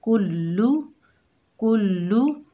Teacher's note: जैसे कुल, काफ को लाम से मिलाएंगे कुल, फिर लाम के ऊपर पेश है तो इसको बगैर खींचे पढ़ेंगे लू। देखिए मुशद्दद हर्फ को हम 2 मरतबा पढ़ रहे हैं